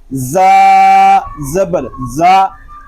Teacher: زا حروف صفیریہ میں سے ہے، اس میں سیٹی کی آواز آئے گی